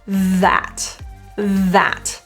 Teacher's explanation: the main issue is the vibration of th so put your tongue out a little bit feel a vibration